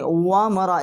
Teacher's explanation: واو جو ہے یہ دونوں ہونٹوں کے درمیان کا جو خلا ہے اس کے واو کا مخرج ہے